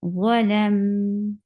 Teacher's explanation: You will not stop mim abruptly, but you will give a medium flow of sound. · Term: tawassut